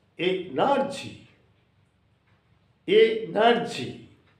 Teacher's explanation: But as there is Y at the end, you must give the stress on E, not N-E-R.